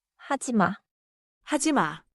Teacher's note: 말을 길게 끌지 말고 짧게 내려요.